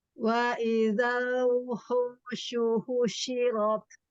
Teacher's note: Tak jangan lupa, tak sukun. Lalu roknya juga tafkhim.